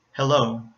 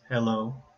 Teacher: second syllable starts with the consonant Lo and in this case you hear a light l sound because it's starting it comes at the beginning of a syllable